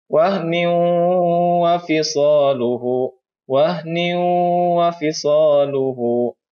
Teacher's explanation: Maka membacanya langsung diidghamkan ke huruf waw dengan ditahan selama 2 harkah. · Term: idgham bigunna